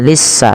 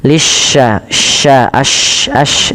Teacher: Kemudian pada lafal shin lisya ya, lisya tasydidkan sinnya, tapi hati-hati jangan sampai terbaca dengan sin, jangan dibaca lissa tapi lisya, sya pakai y gitu ya. Nah, ini untuk shin itu cara membacanya adalah di tengah lidah kita bunyinya lisya, sya, ash.